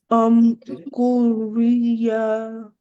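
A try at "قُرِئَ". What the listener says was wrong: Hamza is pronounced. Kuri'a. Kuri'a. So that's what will sound, right? Though you're seeing the ya at the base of it, but it will not be pronounced. So the Hamza on top of it will be pronounced instead. Kuri'a. Kuri'a. Kuri'a.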